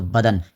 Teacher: دن میں نون ظاہر کر کے پڑھتے ہیں